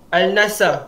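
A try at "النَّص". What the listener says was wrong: Dia tak boleh al. An-Nas.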